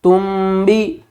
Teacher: نون کی آواز کو میم کی آواز میں بدل کر پڑھیں گے۔ اب یہاں پر نون نہیں پڑھا جائے گا، میم پڑھا جائے گا۔ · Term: اقلاب